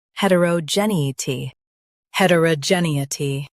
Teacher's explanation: Stress jen and keep it clear.